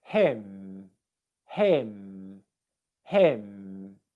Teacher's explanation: the lips are coming together and the airflow comes out through the nose